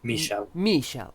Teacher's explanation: stress on the first syllable